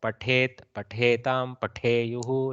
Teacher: This takara is Mahaprana, so little bit of that ha sound should come out.